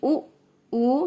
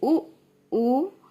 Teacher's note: ये हम ओठों की हेल्प से ही बोल रहे हैं, इसलिए इन्हें ओष्ठ की कैटेगरी में समझा जाता है